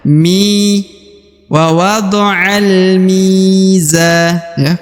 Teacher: kemudian di depan huruf Mi terdapat ya sukun atau ya mati maka huruf Mi wajib dibaca Dua harakat ya